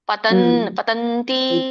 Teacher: ಆ ಅನುಸ್ವರ ಅಷ್ಟೊಂದು ಪ್ರೊನೌನ್ಸ್ ಆಗಲ್ಲ ಸ್ವಲ್ಪ ಅಲ್ಪ ಪ್ರಮಾಣ ಮಾತ್ರ ಆಗುತ್ತೆ ಮುಂದಿನ ಪದ ಮಾತ್ರ ಹೆಚ್ಚಾಗುತ್ತೆ